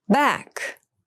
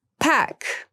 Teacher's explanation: back has the voiced B sound and pack has the unvoiced P sound